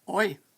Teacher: The pronoun I may be pronounced oi, rhyming with boy